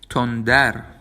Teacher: It also appears as a short alveolar trill, though that seems inconsistent and depends on the speaker.